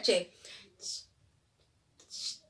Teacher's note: Muy bien, los africados es la combinación de los oclusivos y los fricativos. Es decir, hay un pequeño impedimento de salida, pero logra al final salir el aire